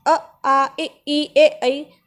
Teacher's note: अवृत्ताकार में बोलेंगे हम अ, आ, ई, ए, ऐ, तो इसमें हमारे होंठ गोल नहीं हो रहे, तो यह अर्धवृत्ताकार हैं।